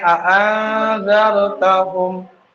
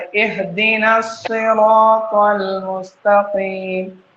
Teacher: حمزہ ہا کا مخرج شروع حلق سے ادا ہوتا ہے